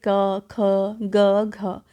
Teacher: अतः कंठ से ये 4 प्रकार की ही आवाज़ निकल सकती है। क में हवा रोककर और ख में हवा छोड़कर, ग में हवा रोककर और घ में हवा छोड़कर · वो आवाज़ कंठ से आती है और उससे जो अक्षर बनते हैं उन्हें कंठव्य कहते हैं